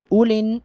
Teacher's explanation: حمزہ کے فوراً بعد لام کو نون کے ساتھ ملائیں گے